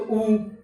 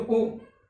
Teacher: जब हम उच्चैरुदात्त से उच्चारण करेंगे तो उ, नीचैरुदात्त से उच्चारण करेंगे तो उ, और जब स्वरित से करेंगे तो उ। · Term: उदात्त